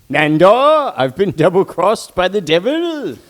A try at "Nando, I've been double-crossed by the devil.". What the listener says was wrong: Yeah, you don't say it fast enough, dude. You gotta say it faster. It's no, I've been double crossed by the devils.